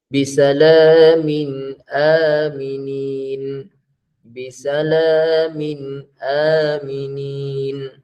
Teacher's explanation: Jelas bunyi nun tu, tanwin tu, yang mana asalnya nun mati, jelas bunyi nun mati tu. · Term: izhar